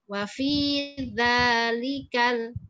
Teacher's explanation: Za ujung lidahnya keluar, lam tidak.